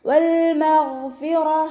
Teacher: ഗൈനിൻ്റെ മഖ്റജ് വരുന്നത് അദ്നൽ ഹൽഖാണ്. തൊണ്ടയുടെ ആദ്യ ഭാഗം സൗണ്ടിന് ഗ എന്നുള്ള സൗണ്ട് തന്നെ കൊടുക്കുക കേട്ടോ. അയിനിൻ്റെ സൗണ്ടായി പോവാതെ നോക്കുക.